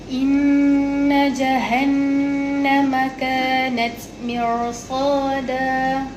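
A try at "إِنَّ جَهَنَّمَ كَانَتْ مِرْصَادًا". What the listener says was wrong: Kena baca tebal kan. Mir. Tak, itu mer. Mirsada. Tarik ni lidah ni, tarik sampai dekat bahagian permulaan langit kan.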